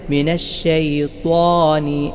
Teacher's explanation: എവിടെയാണ് ത്വാഇന്റെ മഹ്റജ് നാവിന്റെ തലയും മേലെ മുൻപല്ലുകളുടെ മുരടും ഇങ്ങനെ തന്നെ മൊഴിയണം അതോടൊപ്പം ത്വാ ഉച്ചരിക്കുമ്പോൾ അതിന് പ്രത്യേകിച്ച് രണ്ട് സിഫത്തുകൾ കണക്കിലെടുക്കണം